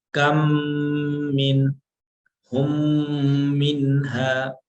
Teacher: میم مشدد کو غنہ کے ساتھ پڑھا جائے گا، یعنی ناک کے ذریعے آواز کو تھوڑا کھینچ کر پڑھا جائے گا، جیسے آپ نے ادھر پڑھا تھا کھینچ کر ناک سے، کم من ہم منہا، ٹھیک۔